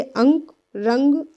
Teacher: क्यों? क्योंकि यह नाक और मुख के सहारे से बोली जाती है, जिसमें नाक से अधिक सांस निकलती है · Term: अनुस्वार